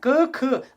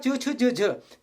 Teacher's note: स्वर तंत्रियां, उनमें कंपन जो है नहीं होगी, उनको हम अघोष कहते हैं। ठीक है ना, अगर साधारण शब्दों में आपको बताऊं तो प्रत्येक वर्ग का पहला और दूसरा वर्ण, प्रत्येक वर्ग का पहला और दूसरा तथा श श स, तीनों प्रकार के स जो है वो अघोष हैं।